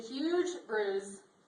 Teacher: did you notice bruise, spelled with an S, pronounced with a Z?